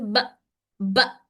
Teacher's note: जब झटका आता है तो आवाज में थोड़ी सी लाउडनेस पैदा हो जाती है। जब आवाज में लाउडनेस पैदा होती है और आवाज जल्दी से बंद हो जाती है।